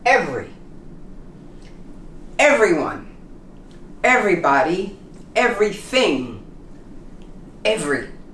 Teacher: the e practically disappears